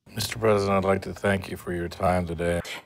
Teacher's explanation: the C in thank links to you to sound like Q